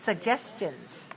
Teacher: 3 syllables, stress the second.